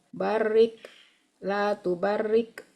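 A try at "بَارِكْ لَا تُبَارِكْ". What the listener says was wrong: Jangan di tasdid tuh. Barik la tubarik gitu.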